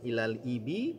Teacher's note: lamnya alirkan sedikit bunyinya karena punya sifat tawassut. Ilal ibi, jelaskan bunyi kasrah ibi, jangan eb tapi ibi.